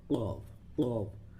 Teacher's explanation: بڑے قاف کا مخرج ہے زبان کی جڑ اور اس کے مقابل اوپر کا تالو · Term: بڑا قاف